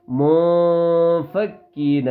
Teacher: اخفا کا مطلب ہے نون کی آواز کو ناک میں ایک الف کی مقدار، ایک الف سے مراد ہے 1 سیکنڈ کے برابر ناک میں چھپائیں گے، لیکن ہلکا سا